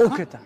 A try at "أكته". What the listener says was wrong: كيف كيف نطقتها؟ الهمزة ضميتها ضميت الهمزة أوكتا أوكتا أوكتا أكتا